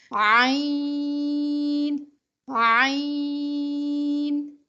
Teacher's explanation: عین میں آپ کا ساؤنڈ لفٹ ہوتا ہے، پش نہیں ہوتا۔ آواز اٹھتی ہے، باریک آواز نکلتی ہے۔ · اردو میں ہم بولتے ہیں عین عین، لیکن چونکہ عربک لینگویج میں یہ حلق کے درمیان سے نکلتا ہے عین، تو اس لیے اس کو ادا کرنے میں بہت سارے مسلمانوں کو مشکل کا سامنا کرنا پڑتا ہے۔